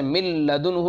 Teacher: اسی طرح سے من لدنہ میں نون کو من لدنہ تھا، نون کو آپ نے لام بنایا، لام کو پھر جو ہے لام کا لام میں ادغام کیا گیا، تو نون کی کوئی صفت باقی نہیں رہی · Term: ادغام تام